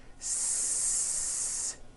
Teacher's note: The S consonant, made with air going through your front teeth.